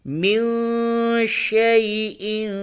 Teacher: نون ساکن کے بعد شین ہے، اخفا کریں گے.